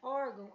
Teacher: na palavra órgão, há um ditongo nasal